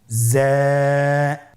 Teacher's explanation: যা উচ্চারণ করার সময় অবশ্যই এক আলিফ টেনে পড়তে হবে এক আলিফ টেনে পড়তে হবে হরফটি বারিক হরফ এজন্য পাতলা করে উচ্চারণ করতে হবে হরফটির মাখরাজ আপনারা দেখতে পাচ্ছেন জিহ্বার আগা সামনের নিচের দুই দাঁতের পেট ও আগার সঙ্গে লাগিয়ে উচ্চারিত হয়।